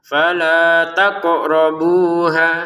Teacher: Falanya dua harakat takrabu sama ha juga masing-masing dua harakat. Qofnya jangan lupa dipantulkan.